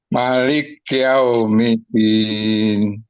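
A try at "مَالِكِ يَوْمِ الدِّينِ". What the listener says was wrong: Panjang sedikit, Pak. Maliki. Maliki. Liki. Jangan liki. Liki. Itu masih berhenti di huruf kaf ya, Pak. Maliki. Yang benar maliki. Maliki.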